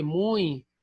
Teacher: o muito é um caso excepcional de ditongo nasal. Não aparece o tio, mas a pronúncia é nasalizada.